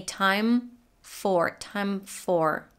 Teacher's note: Then again, we link two consonants together, like in this case, time for. We go to the M sound and then straight into the F. So we don't release the M, but release the F. We don't say time for, we say time for, time for.